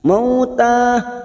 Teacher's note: fathah bertemu sukun huruf layin kita lunakkan. Mauta, alif kecil di atas 2 harokat.